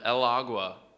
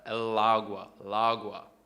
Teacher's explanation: the L bleeds, it joins with the A.